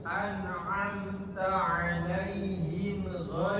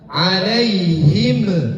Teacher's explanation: Itu namanya qalqalah. Mim bukan termasuk kepada huruf qalqalah. Jadi jangan dipantulkan. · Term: idhar syafawi